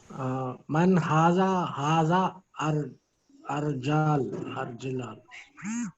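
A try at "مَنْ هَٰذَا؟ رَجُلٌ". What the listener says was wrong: No, that alif is after za, so it is a part of haza. and and the last three alphabets are the alphabets of a separate word, rajulun. Okay, rajulun means man.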